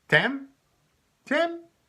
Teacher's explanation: Just with a rising intonation, Tam?